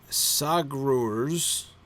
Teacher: Stress on the second syllable. There are two syllables, right? Grurz is one long, awkward syllable, right?